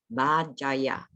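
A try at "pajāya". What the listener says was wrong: Pajaya. P, not B. Pajaya. This is Pajaya. Pajaya should be Pajaya. Pajaya. Pajaya. P, P. Letter P.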